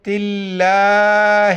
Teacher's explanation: تلّہ، چونکہ تو علامت وقف میں سے یہاں پر ٹھہریں گے تو آخر میں صرف ہا کا ساؤنڈ آئے گا